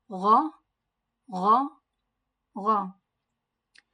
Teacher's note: Makhraj of Gha is it comes out from the upper part of the throat and it is a thick word